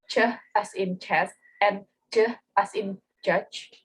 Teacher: And the last is in positive delayed release, the sounds are produced with stop closure in the oral cavity followed by friction at the same point of articulation. There's only two examples, ch as in chest and j as in judge.